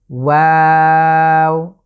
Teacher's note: আমি কিন্তু শুরুতে মুখটা গোল থেকে আবারও ওয়া আ যখনই যাচ্ছি তখন স্বাভাবিক হচ্ছে